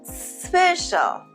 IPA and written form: ˈspeʃ.əl (special)